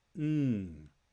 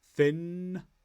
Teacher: To make the sound, the back of your tongue touches the top of your mouth to make a block. The air goes through your nose, but there's no release.